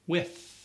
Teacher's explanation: The tongue pushes up against the teeth also in teeth, but there's no vibration sound. There's just air that is released.